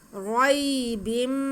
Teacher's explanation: इसको हमने खींचना नहीं है, बस हमने रा को पुर पढ़ना है क्योंकि रा पे ज़बर है